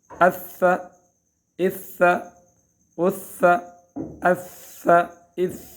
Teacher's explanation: اف اف اف، اور ثا مشدد ہو تو اف اف اف اف اف، اس طرح قلقلہ نہیں ہونا ہے، قلقلہ کے حروف میں سے یہ نہیں ہے. اف اف اف اف، آواز کو روکنے کی کوشش کرنی ہے اپنی طرف سے مکمل.